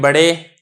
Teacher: अब ये रा के ऊपर भी मैं फतह पढ़ रहा हूँ, लेकिन इसमें जो मिलान है या की तरफ वो कम है, तो इसको इमाला सुगरा कहा जाएगा।